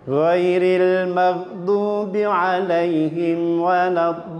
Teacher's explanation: Ugeripun akhir nggih. Akhir dari bacaan mesti medun, mboten malah munggah.